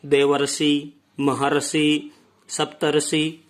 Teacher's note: अर का उच्चारण यहाँ पर होता है, न कि रे का।